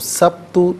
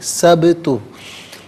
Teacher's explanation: ساکن ہے لیکن حرف قلقلہ ہے، تو ادائیگی میں آواز لوٹتی بھی محسوس ہو، سبت نہیں، سبت۔